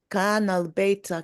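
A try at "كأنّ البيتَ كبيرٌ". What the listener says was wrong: not kana, it's ka'anna. Ka'anna. Ka'anna.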